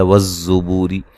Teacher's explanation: زا کو سیٹی سے ادا کریں گے، سختی سے ادا کریں گے